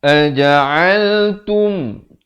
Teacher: Aja'altum, bukan tum, ta bari dhammah bunyi tu, bukan bunyi to.